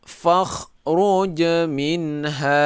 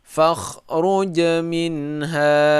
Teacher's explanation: Fakhruj minha min tidak dengung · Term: zahir